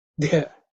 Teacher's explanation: this is the fourth letter in the Tavarga, so it has to be aspirated, Mahaprana.